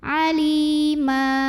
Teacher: Ma jika berhenti di sini hukumnya adalah mad iwad karena ada baris tanwin fathah yang diwaqafkan. Maka cara bacanya baris tanwin fathah ini jadi 1 jadi fathah dan panjangkan 2 harokat. · mad tabi'i dhahiri karena ya sukun didahului baris kasrah, maka lam panjangkan 2 harokat